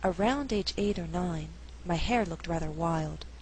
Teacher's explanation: an alternative reading would stress only hair and wild in the second half of the sentence the sentence would then have to be read at a faster